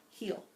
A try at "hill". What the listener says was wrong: You keep changing. Keep saying heel and hill. Hill. It rhymes with mill. It's not meal.